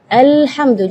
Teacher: huruf-huruf yang seharusnya sukun yang tidak ada qalqalahnya malah diberi Qalqalah